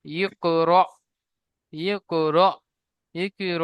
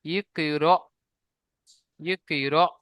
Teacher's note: হামজার উপরে সাকিন আছে, সাকিন যুক্ত হামজাকে একটু ঝাটকা দিয়ে বা ধাক্কা দিয়ে পড়তে হয়। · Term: হামজা সাকিন